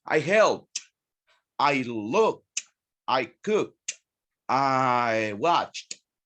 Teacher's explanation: we pronounce the D as T at the end